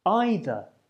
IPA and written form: ˈaɪðә (either)